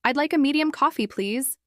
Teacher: Uses polite rising intonation on please.